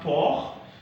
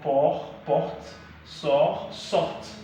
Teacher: The T is not pronounced because it's not among the consonants pronounced at the end of the word.